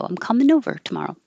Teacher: the n will connect to the o